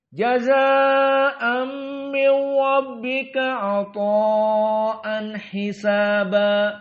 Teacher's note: jazaa dan ata'a dibaca tawassut dalam keadaan 4 harokat.